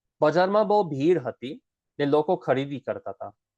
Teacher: Even bo, we get rid of that H.